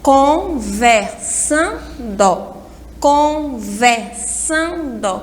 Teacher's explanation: Então, conversando, a sílaba mais forte é a penúltima sílaba.